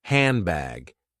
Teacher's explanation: D disappears, and N is changed into M. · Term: assimilation